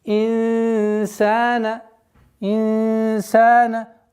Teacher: При произношении ихфа струя продолжает выходить из ротовой полости. А при назализации полноценной невозможно.